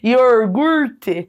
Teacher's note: Puxando bem o meu R aqui paranaense